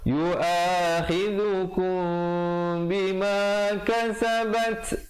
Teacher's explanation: Walakin 2 harakat, yu'akhidhukum, ikhfa syafawi di situ. Betul, ikhfa syafawi ya, mim mati bertemu ba, 2 harakat di situ